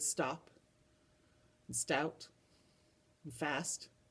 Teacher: s and t are not a digraph they make more than one sound you can hear both the s and the t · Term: consonant cluster